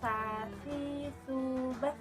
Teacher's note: menyentuhkan ujung lidah kita ke dinding gigi seri bagian atas kemudian diucapkan dengan mengalirkan suara dan nafas yang halus